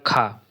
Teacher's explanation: इनमें से जो महाप्राण है वो है ख।